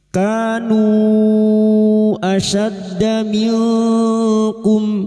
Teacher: Nu bertemunya mad dengan hamzah di lain kalimat mad jaiz munfasil. Mad jaiz munfasil kita panjangkan empat atau lima harakat. Namun kita tentukan salah satu misalnya lima harakat maka nanti jika terdapat mad jaiz munfasil kita samakan lima harakat kita panjangkan.